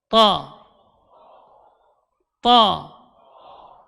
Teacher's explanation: Jadi tidak ada perubahan di mulutnya ketika pengucapan huruf ta. Ta keluarnya dari ujung lidah berada di usul thanaya, di pangkal gigi seri atas.